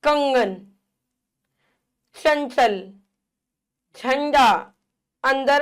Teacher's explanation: अन्य चिन्ह देखिए अनुस्वार यानी कि बिंदी होती है, इसका उच्चारण नाक से होता है।